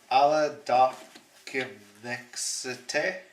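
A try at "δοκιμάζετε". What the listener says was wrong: That letter is a zeta, not a c. Dakemadzete. So dakemadzete.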